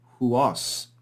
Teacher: The iota and upsilon of diphthongs often disappear when followed by a vowel. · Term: disappearance